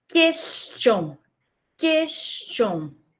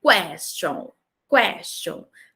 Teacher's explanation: Essa primeira pronúncia é do inglês, question, e essa segunda, abertinha, mais aberta, é do francês.